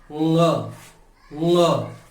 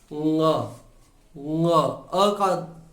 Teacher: ङ, तो नासिका से इसका उच्चारण होता है। मुख मार्ग बंद हो जाता है, जीभ ऊपर की तरफ हो गई तो मुख का जो रास्ता है, जो श्वास नली है वो बंद हो जाती है। ङ, और हवा जो है वो नासिका से निकलती है। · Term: नासिक्य